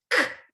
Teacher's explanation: If I say k, I close my vocal tract for just a second by lifting the back of my tongue up to my soft palate.